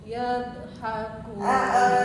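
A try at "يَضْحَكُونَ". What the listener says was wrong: Ya-nya langsung ke bot, jangan pakai diayun. Iya, tinggal botnya ditebelin. Nah, ianya jangan ngayun. Langsung masuk, langsung nyamper ke bot.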